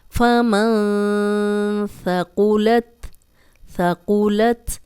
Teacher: سا کو نرم پڑھیں گے، قاف کو موٹا پڑھیں گے